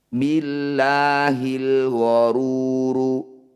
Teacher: Ru panjangkan 6 harokat, huruf terakhir kita sukun atau kita matikan. Billahil gharuru, ketika dihentikan billahil gharur. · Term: mad arid lis sukun